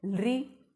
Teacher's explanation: दांतों को स्पर्श करके निकलते हैं ये वर्ण बाहर, इसलिए ये दंती वर्ण कहलाते हैं। · हमारी ज़ुबान का बाहर वाला अगला हिस्सा है, शुरुआत वाला, वो दांतों के वहाँ पीछे के हिस्से की तरफ स्पर्श करता है।